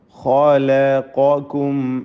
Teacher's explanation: ഖാഇനും ഖാഫിനും തഫ്ഖീമാണ്, അതിനിടയ്ക്ക് ലാമ് തർക്കീഖാണ്.